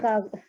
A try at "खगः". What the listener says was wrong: एकः खगः ख जो है, ख को बिल्कुल साफ उच्चारण करना है, क्योंकि ख को यदि आपने ख नहीं बोला तो कई बार किसी किसी के मुंह से कगह भी निकल जाता है, कगह। ख की जगह